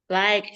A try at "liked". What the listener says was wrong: Liked. Nah, ditambahin the jadi ada hembusan dari mulut. Liked.